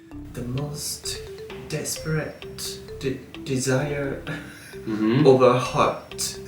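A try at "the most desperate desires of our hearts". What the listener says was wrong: Hearts. Not heart. Hearts. It doesn't have the T. He kind of softens it. It kind of tapers off at the end.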